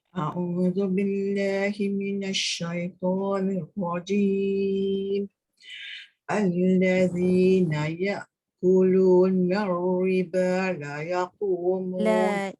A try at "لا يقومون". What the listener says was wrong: La yaqumu panjang la.